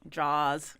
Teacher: he does not pronounce R's after vowels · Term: drops his R's